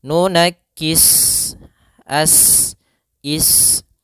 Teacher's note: Maka cara membacanya sempurnakan daripada desisan huruf sin, yaitu nafas kita mengalir dan ada sifat, dia sifat shafir. Ya, shafir itu adalah seperti desisan suara burung.